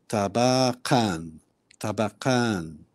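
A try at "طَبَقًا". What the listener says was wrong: Ahsant, with a ta, tabaqan.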